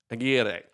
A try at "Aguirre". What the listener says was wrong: Gotta roll the R's.